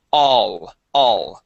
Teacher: instead of O starting with an o sound we start with an a sound